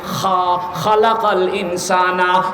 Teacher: খা উচ্চারণ করার সময় ওই যে আলাজিবা রয়েছে, যেখানে কাশ হলে খুশখুশ করে চুলকায়, ওই জায়গা থেকে উচ্চারিত হয় খা।